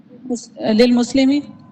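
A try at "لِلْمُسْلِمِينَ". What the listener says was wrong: مسلمی ایک زیر لگا رہے ہیں، کیوں؟ الف لام کی وجہ سے.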